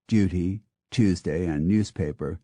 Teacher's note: Northerners tend to prefer the ooh sound to the u sound in words like Duty Tuesday and newspaper